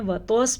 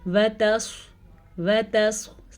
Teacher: صاد کو پر پڑھنا ہے کیونکہ صاد حروف مستعلیہ میں سے ہے. اب صاد کو پر پڑھتے پڑھتے تا کو توا نہ بنا دینا آپ نے.